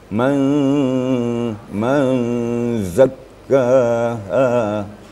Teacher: Nun sukun bertemu zai. Itu disebut dengan ikhfa hakiki. definisinya, menyembunyikan atau menyamarkan bunyi nun mati atau tanwin apabila bertemu dengan salah satu huruf yang 15.